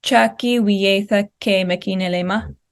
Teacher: it rises for that second syllable, and it falls. And then because we do have that ke, even though it's not right at the end, we don't see as much of a rise at the end.